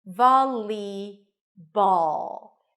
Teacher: The dark L is somewhere between an L an r and a w